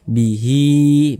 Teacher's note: Mad sililah qasirah panjangnya juga dua harakat